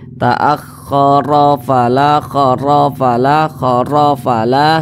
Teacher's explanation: Nah, kemudian huruf ra ini dibaca tebal, dibaca tabkhim karena dia memiliki tanda baca fathah. Jadi ketika mengucapkan huruf ra yang tabkhim itu, pangkal lidah kita itu naik, terangkat ke atas ketika kita mengucapkannya.